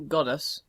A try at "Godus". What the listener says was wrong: Are you actually saying goddess? When you say it, it sounds like you're saying goddess. It's GODUS. GODUS.